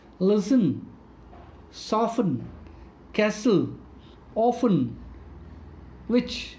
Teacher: Here the sound of T is silent. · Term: silent T